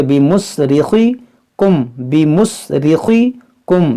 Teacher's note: را باریک کریں گے، خا کو موٹا کریں گے